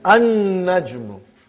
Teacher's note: You did not pronounce lam because noon is a shamsi, sun letter.